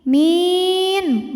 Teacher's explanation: Di mana mad tabi'inya ya sukun didahului kasrah, huruf yang disukunkannya nun. Jika berhenti, min, mi-nya boleh panjangkan 2, 4 atau 6 harokat, tapi harus konsisten dalam sekali bacaan. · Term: mad arid li sukun